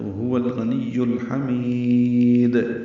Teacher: ہا وسط حلق سے ادا کریں گے، یہ حروف حلقی میں سے ہے اور حروف قمری میں سے بھی ہے، اسی لیے لام پڑھا جا رہا ہے۔